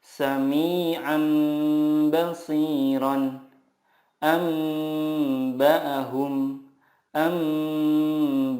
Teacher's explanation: mengganti nun sukun dengan mim sukun dan disertai gunnah 2-3 harokat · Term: iqlab